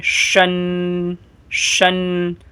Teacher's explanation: یہ والی شین جب پڑھیں گے تو زبان کے جو بیچ والا حصہ ہے اسے اوپر کے تالو سے لگائیں گے